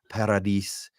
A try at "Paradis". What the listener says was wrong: The only thing is, because it's a French name, you don't pronounce anything after the last vowel, so it's Paradis. Yeah, everything in French stops at the vowel.